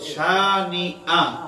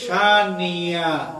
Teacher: হামজাকে হামজার মতো উচ্চারণ না করে এমন ভাবে উচ্চারণ করেন যে আওয়াজ শুনলে এখানে তিনি ইয়া বানিয়ে ফেলেছেন